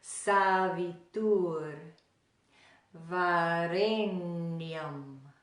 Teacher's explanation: all of the sounds are made with the tongue right behind the teeth